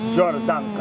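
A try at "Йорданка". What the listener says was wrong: Yeah, you have to roll your R.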